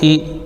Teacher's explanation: حمزہ زیر ای معروف پڑھیں گے، اے نہیں ہونا چاہیے